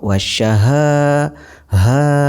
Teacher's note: mad tabi'i dibaca panjang 2 harokat